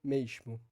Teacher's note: E essa ditongação é sim influenciada pela palatalização do S, que vem logo depois da vogal, ou seja, o S, que é pronunciado como sh, logo depois da vogal, influencia nessa ditongação